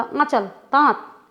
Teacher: आंचल, दांत, इसको हमने पूरा पूरा नाक से नहीं बोला, जल्दी से बोला, आंचल, दांत, लघुता इसी को कहते हैं।